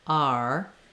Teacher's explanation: in the r I'm starting with my jaw a little bit more open and my tongue a little bit more relaxed and then I'm lifting into the ER · you have this kind of ah sound ending in the ER sound not too slow and not separate not ah and ER but